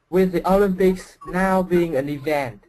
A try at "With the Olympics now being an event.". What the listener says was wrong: Okay, that sounded much better.